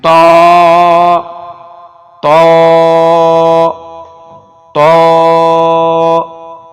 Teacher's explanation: طا کو ہم موٹا کر کے پڑھیں گے اور 1 الف کھینچنے کی مقدار ہے اس کی، منہ سیدھا کھلے گا، ہونٹ کو گول نہیں کریں گے۔